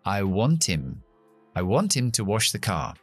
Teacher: Así que quitamos esa H, que se llama elision, lo que estamos haciendo, omisión dentro del mundo fonética. Y entonces estas dos palabras se juntan.